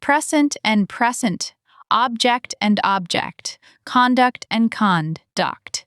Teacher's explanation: Noun stress first syllable, verb stress second syllable. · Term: word stress